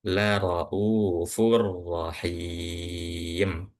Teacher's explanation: Domatain kan tanwin tuh bertemu dengan huruf ro atau setelahnya itu adalah huruf ro. Maka ini yang disebut dengan idgham bila ghunah